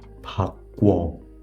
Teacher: So according to step number 2, I am going to add another vowel, form a double vowel that no longer sounds like 우, but now sounds like 워